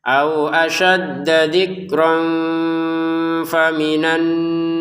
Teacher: Nah, di sini zikron ya kita baca zikro panjang dua harakat untuk rnya karena kita berhenti. Kalau kita gabungkan maka kembali menjadi tanwin atau fathatain bertemu sama fa dibaca samar